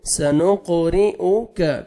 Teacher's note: سنق، قاف حروف قلقلہ میں سے ڈبل ساؤنڈ آئے گا. سنق، را کے نیچے زیر ہے، را کو باریک پڑھیں گے. سنقرئك، کاف کو باریک پڑھنا ہے.